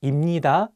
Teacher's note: So if you pair 비읍 with 니은, you can pronounce 비읍 as 미음.